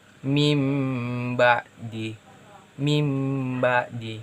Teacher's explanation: Meme karena disitu ada Meme kecil yang bertemu dengan huruf ba Jadi huruf nun sukun itu dileburkan atau tidak diucapkan